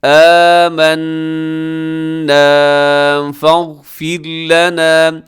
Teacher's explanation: آمنا فاغفر لنا، اس میں غین موٹا ہے، باقی را باریک ہے